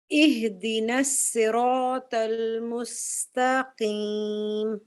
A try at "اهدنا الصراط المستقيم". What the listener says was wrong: اچھا سواد آپ کا موٹا ہی تھا یہاں پر, اس کو تھوڑا سا پر پڑھیں. اہدنا الصراط المستقیم.